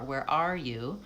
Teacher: If I'm trying to highlight R, then the stress is going to be on R.